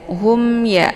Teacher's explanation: Kemudian hum ya, di sini ada mim sukun berhadapan dengan huruf ya, dinamakan dengan izhar syafawi ya. Maka untuk izhar syafawi ini dibaca mimnya dibaca jelas ya. Hum ya, jadi cukup ditekan saja.